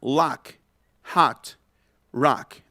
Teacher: que es como la A del canto, así, más abierta, más abierta. Es una A como con el sonido de la O.